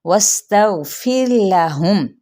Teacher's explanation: پھر یہاں پہ را ساکن ہے، ما قبل زیر ہے، تو یہ را باریک پڑھا جائے گا · واو کی زبر کو سین کے ساتھ اور سین پہ سیٹی کو واضح طور پہ ادا کریں گے